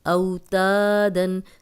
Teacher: جزم والی واو پیچھے زبر ہے، یہ واو لین ہے، اس کو لمبا نہیں کرنا